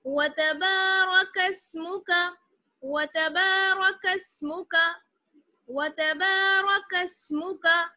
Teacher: آگے ہے وتبارک اسمک, واو زبر وا تا زبر تا وتا, با میں الف مدہ جڑ گیا, با الف زبر با, ایک الف کے برابر کھینچیں گے